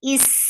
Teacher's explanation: Seen is a light letter. Seen will get whistle sound. Is, this snaky sound should be there.